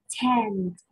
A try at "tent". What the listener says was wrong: Very good, tent. Very good. You remember the T sound at the end.